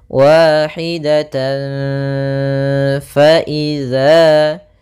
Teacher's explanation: kita samarkan taknya atau tanwinnya kepada huruf fa. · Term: ikhfa